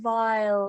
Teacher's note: just that nice diphthong and you know the V and the dark L